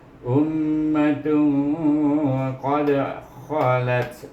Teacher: Ta di sini tanwin bertemu dengan huruf qaf, iaitu huruf ifa. Baca dengan dengung, iaitu dengan ifa hakiki 2 harakah. 2 harakah. Jadi bacanya ummatun qad khalat.